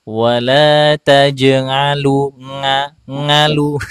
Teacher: huruf ainnya ini kadang-kadang masuk ke tonggorokan atas. Jadi seperti wala tajalu nga ngalu, jangan ngalu tapi alu.